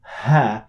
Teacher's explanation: produced much deeper in your throat in or through your glottis by opening your vocal folds completely and letting the stream of air go out there's no friction whatsoever and that's why it's produced much easier so ha is different